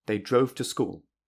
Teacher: Usually, the stressed syllable will be school, because it is the last important word in the sentence. However, if it is on they, it emphasizes that it was definitely them who went to school, not anyone else.